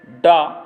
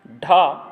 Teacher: डा घोष अल्पप्राण है, ढा घोष महाप्राण है